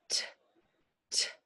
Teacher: put your hand on your throat t t your tongue is behind your teeth T nothing happening in my throat unvoiced